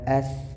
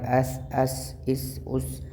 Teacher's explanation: ثا نرم حروف میں آتا ہے، سین جو ہے وہ سٹی والے حروف میں آتا ہے